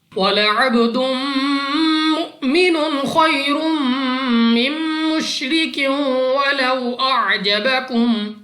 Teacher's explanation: बा हमारे पास कलकला में से है, तो जब हम अदा करेंगे हमारी आवाज हमें वापस लौटती हुई सुनाई देगी